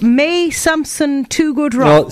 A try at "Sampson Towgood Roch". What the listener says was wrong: Sampson You said May Sampson.